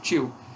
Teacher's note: Tio é um ditongo decrescente. O I é vogal, o O é semivogal.